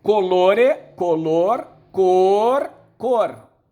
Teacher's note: Aquele E caiu, color. O L caiu, cor. E esses dois Os se fundiram num O só.